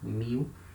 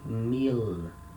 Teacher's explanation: when letter l comes at the end of a syllable in the in the speaking we substitute letter l for the letter u and we say mu we don't say meal remember letter l has the le sound